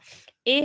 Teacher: ए हा जो स्वर आहे त्यामध्ये अ पण आहे इ किंवा दीर्घ ई यामुळे हा ए झालेला आहे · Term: संयुक्त स्वर